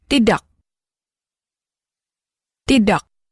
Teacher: Tidak ends in a K. The K at the end of a word is often pronounced with what's called a glottal stop. · Listen again and notice how the K stops short.